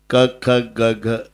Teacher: क ख ग हे कंठे आहे